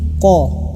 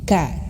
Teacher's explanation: Ko sama makhrajnya seperti kaf ya. Ka. Tapi membedakannya itu adalah dia tebal. Ko. Nah, maka ketika dhammah nih, maka ibu bapak harus menebalkan ku. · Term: qaf